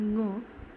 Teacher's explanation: हा नाकावाटे ह्याचा ध्वनी येतो म्हणून हा अनुनासिक